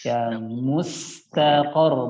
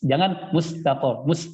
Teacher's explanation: huruf sin yang sakinah yang sukun, maka alirkan ya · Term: sifat rakhwah